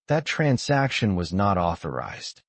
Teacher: Notice the stress on not. It's the key word.